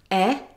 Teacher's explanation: Because e is a Front Vowel. The sound is made by the front part of the tongue in the front of the mouth.